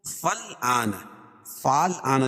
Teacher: فالآن، فال آنا لکھا ہوا لیکن فل آنا پڑھا جائے گا۔ آ کھڑا زبر قائم مقام الف مدہ کے، اس کو ایک الف کے برابر کھینچ کے پڑھیں گے